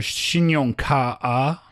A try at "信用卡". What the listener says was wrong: No, 卡 is one syllable. 信用卡.